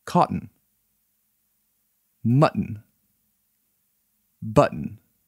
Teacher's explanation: When the final syllable of the word is T-O-N or T-T-O-N, it is pronounced as T-E-N. The T should be kept plosive instead of being turned into a D.